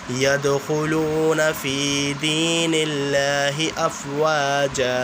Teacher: واو ساکن سے پہلے پیش ہے اس لیے ایک الف کے برابر کھینچا جا رہا ہے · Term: حرف مدہ